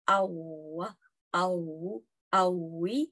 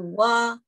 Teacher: So u tu yang bulatkan bibir tu ialah point makhraj untuk hasilkan wow.